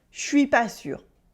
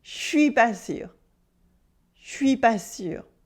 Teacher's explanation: then we cut the e of je and it becomes je suis pas sûr